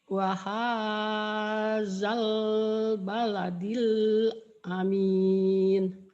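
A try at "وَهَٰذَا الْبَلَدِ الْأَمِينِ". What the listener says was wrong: Alif lamnya jangan ditahan. Wahadal, wahadal, wahadal baladil. Wahadal baladil. Wahadal baladil amin.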